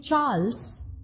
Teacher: the name Charles, you are pronouncing it as Ch, so it is an older borrowing.